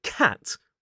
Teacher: So, in the word cat /kæt/, we have the /æ/ vowel sound — bottom front.